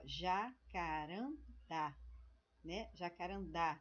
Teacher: é a última sílaba quando nós acentuamos a última sílaba nós chamamos de oxítona